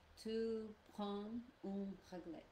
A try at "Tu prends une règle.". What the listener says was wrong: Parfait.